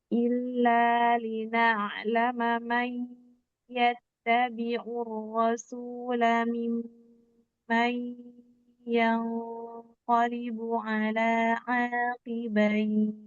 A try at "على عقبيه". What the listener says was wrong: Ain pendek ulang ala aqibai.